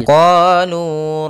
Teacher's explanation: Pada lafal qalu, kedua-duanya ada hukum tajwid berupa mad tabi'i, yang mana pertama huruf qaf ada fathah bertemu dengan alif, maka qaf qa kita panjangkan 2 harakat. Lu kita juga panjangkan 2 harakat ditandai dengan dhammah bertemu waw.